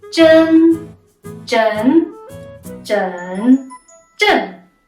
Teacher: Okay, so the next sound is the letters E-N. The E is just like it is when it's on its own in Pinyin, and then you add the nasal sound at the end